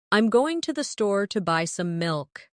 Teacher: Notice how certain words are stressed. Going, store, buy, milk. Now try repeating it with the same emphasis.